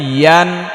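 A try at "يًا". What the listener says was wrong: ইয়ান জিব্বার মধ্যখান উপরের দিকে চাপিয়ে ইয়া ইয়া ইয়ান ইয়া আলিফ দুই ইয়ান ইয়ান ইয়ান বলা যাবে না ইয়া ইয়া একটু চাপিয়ে বলতে হবে ইয়া আলিফ দুই জবর ইয়ান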